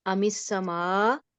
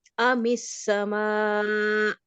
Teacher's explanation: حمزہ ساکن کی آواز ادا کریں گے اور اس کو اس کے مخرج میں جھٹکا دے کے روکیں گے